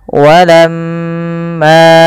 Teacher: Apabila ada mim berharakat tasydid, maka ia kita namakan dengan bacaan ghunah. Cara membacanya adalah ditahan suara mnya sepanjang dua harakat.